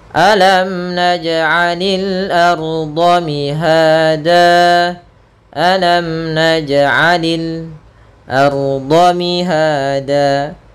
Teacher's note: mim mati bertemu dengan nun. Jelas suara mimnya tidak boleh tahan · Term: izhar syafawi